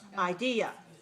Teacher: the first syllable is clear but unstressed the second syllable is clear and stressed high and the third syllable is very weak it's reduced